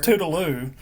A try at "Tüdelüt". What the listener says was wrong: Yeah. Tüdelüt, yeah. Tüdelüt. Like in German, you speak the T in the end in German.